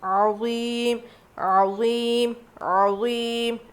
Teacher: تو یہاں پہ عذاب عظیم، عظیم، عظیم ایسے پڑھیں گے، 5 الف کے برابر کھینچ کے پڑھنا ہے۔